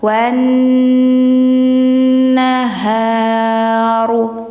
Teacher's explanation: Jadi bacanya itu enggak wal, enggak bunyi l, tapi langsung ke bunyi huruf yang bertasydidnya ya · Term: alif lam syamsiyah